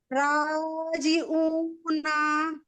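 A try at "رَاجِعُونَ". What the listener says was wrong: आइन निकाल, आइन।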